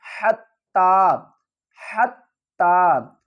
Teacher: ناک میں گنگنا کر آواز کو پڑھنا۔ حتی، ہا کو ہم حلق کے درمیان والے حصے سے ادا کریں گے اور ہا کو تا سے ملائیں گے۔